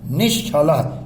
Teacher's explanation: उदाहरणतः निह जोड़ छलह निश्छलह, यहाँ पर विसर्ग छ के कारण तालव्य स्व में बदला